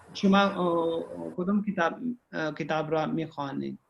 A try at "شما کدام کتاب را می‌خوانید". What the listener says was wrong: شما کدوم کتاب را میخونید. یہ الف جو ہے اس میں یہ نہیں پڑھا جاتا، یہ سائلنٹ ہوتا ہے.